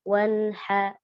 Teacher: hak yang keluar dari tengah tenggorokan ya, atau namanya hak muhmal atau hak tanpa titik.